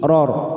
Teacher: Kita pantulkan dengan posisi bibir kita seperti cemberut. Aqrar ra sukun karena sebelumnya fathah, kita baca tafkhim